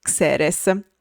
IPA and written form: ˈksɛres (xeres)